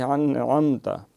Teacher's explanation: چوتھا اور آخری قاعدہ یہ ہے کہ اگر میم ساکن کے بعد نہ میم ہو اور نہ اس کے بعد با ہو تو وہاں پھر میم کا اظہار ہوگا، یعنی میم اپنے مخرج سے بغیر غنہ ظاہر کی کہ اس کو پڑھا جائے گا۔ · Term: اظہار شفوی